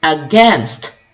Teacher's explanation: the second syllable has a stress